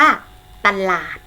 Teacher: นำ2พยางค์คือ พยัญชนะต้นตัวแรกจะออกเสียงอะกึ่งเสียงและพยางค์ข้างหลังจะออกเสียงเหมือนมีหอหีบมานำ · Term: อักษรนำ